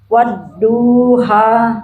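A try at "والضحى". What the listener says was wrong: Du-nya jangan panjang. Duha jangan panjang. Jangan panjang. Wadduha.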